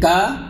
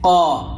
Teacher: تو جیسے ہی ہم اپنے حساب سے بھلے کاف نکالنا چاہیں، لیکن چونکہ کاف کی جگہ سے پیچھے کھسک گئے ہیں حلق کی طرف کو، اس لیے اب کاف کی آواز نہیں نکلے گی، اپنے آپ قاف کی آواز نکلے گی